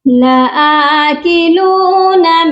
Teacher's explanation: حمزہ کو 1 الف کے برابر لمبا کرے گا